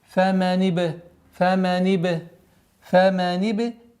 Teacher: Согласовки кесра уходим на ба и применяем правило калкаля.